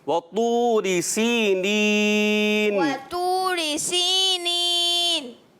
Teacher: طا سب سے موٹا پڑھا جانے والا حرف ہے. اب آپ نے پر کرنا بھی ہے، اس کو پر کر موٹا بھی کریے.